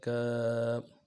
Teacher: کاف کھڑا زبر کا، کھڑا زبر کو ایک الف کی مقدار میں کھینچ کے پڑھنا ہے